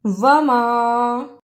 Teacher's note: وما، واو پر زبر، اسے جلدی پڑھنا، میم پر زبر لیکن میم پر چھوٹی مد ہے، اسے لمبا کرنا ہے